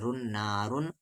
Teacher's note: کے ساتھ الف نا، را پر دو پیش ہے رن نارن، تنوین کی آواز صاف صاف پڑھی جائے گی کیونکہ تنوین کے بعد ہا ہے اور ہا حروف اخفا نہیں ہے، ہا کے ساتھ الف ہا،